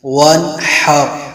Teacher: حا کی آواز حلق سے نکالنی ہے